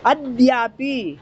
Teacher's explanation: ए तो देखो ये क्या है, ये देखो सुनो, इसको दुत्त बनाना है, इस दा को दो बार पढ़ना, अद्यापि है ना, इसको दा पे वजन दो